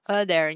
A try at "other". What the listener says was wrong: nha, other. Không là o được, mình sẽ đọc là âm âm ơ cơ. Other.